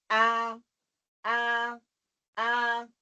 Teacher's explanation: حمزہ جو ہے وہ یہاں سے نکلتا ہے. ٹھیک ہے، حلق کے سب سے نیچے والے حصے سے ادا ہوتا ہے